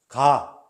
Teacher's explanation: 그냥 가나다라 마바사 하면서 직접 찾아보는 연습을 해야 돼요. 가 할 때, 소리를 완전히 막았다가 빵 터트리네?